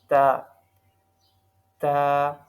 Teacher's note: ہماری زبان کی نوک اوپر کے 2 دانتوں کے جڑوں کے ساتھ لگ رہی تھی، تو ادا ہو رہا تھا تا